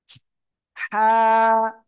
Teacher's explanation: গলাটা চেপে মুখ দিয়ে হালকা বাতাস বের করে উচ্চারণ করবেন